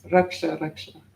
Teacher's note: the short A's in Sanskrit sound like a U kind of